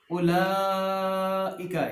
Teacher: یہاں بڑی مد آ گئی ہے تو 3 سے 5 الف لمبا کریں گے۔ اولئک نہیں کہنا، زبر زیر پیش کو لمبا نہیں کریں گے۔